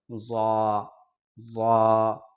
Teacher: یہ سامنے والے 4 دانتوں پہ جا کر ٹچ ہوتا ہے پھر جا کر یہ والا حرف ادا ہوتا ہے